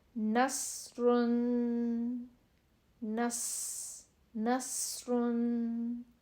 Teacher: سین کی آواز جو ہوتی ہے وہ باریک اور سیٹی والی ہوتی ہے